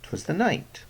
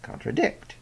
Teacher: three syllables, two slack followed by one stressed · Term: anapest